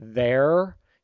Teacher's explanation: in terms of North American pronunciation if you're interested in that your R would be stronger